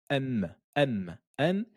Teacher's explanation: M, elle a le contact entre les lèvres. M, M, M. Et elle a le son également qui sort au niveau de la cloison nasale, qui sort dans le nez. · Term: mim